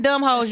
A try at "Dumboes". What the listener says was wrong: the H is silent.